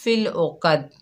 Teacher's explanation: عین کی آواز صاف نہیں نکل رہی، قاف کو بھی موٹا نہیں پڑھا ہم نے اور دال پر قلقلہ بھی نہیں کیا